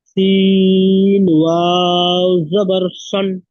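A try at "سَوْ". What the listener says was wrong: সাউন, সান নয়, সাউ। ওয়াউলিন। ইজরা বল। একসাথে ইজরা করেন।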